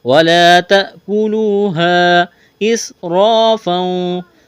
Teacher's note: سین میں سیٹی کی آواز پیدا کریں گے، سین کو باریک کرنا ہے۔ را کے اوپر زبر ہے، را کو موٹا کرنا ہے، الف مدہ ہے، ایک الف کے برابر کھینچنا ہے۔